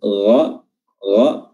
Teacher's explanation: Huruf gha, huruf ghain, tenggorokan bagian atas